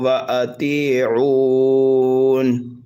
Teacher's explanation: مد عارض کو 1 2 3 الف کے برابر کھینچ کر پڑھ سکتے ہیں